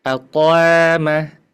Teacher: Aqama tetap dia kalaupun dipanjangkan qaf itu selalu tebal ya. Tidak pecah.